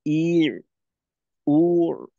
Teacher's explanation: দিয়ে যখন পড়লেন তখন হরকতে একটু সময় নিল যেমন ই উর অর্থাৎ জেরটা এবং পেশটা একটু দীর্ঘ হইলো তো ওইখানে সময়টাকে আরেকটু সংক্ষেপ করতে হবে ই উর জজম দিয়ে